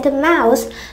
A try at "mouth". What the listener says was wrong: Mouth biến thành âm S.